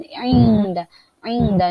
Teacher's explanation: nun berjumpa dengan dal, maka hukumnya dibaca dengung kerana ada ikhfa hakiki